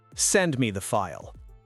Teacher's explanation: Go down on file. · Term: the command